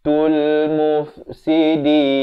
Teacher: Aqibatul, bukan tul tapi tul. Ta beri dhammah bunyi tu, bukan bunyi to.